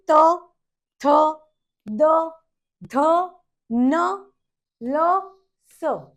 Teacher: दंत्य जिसमें अपनी टंग दांत को टच करती है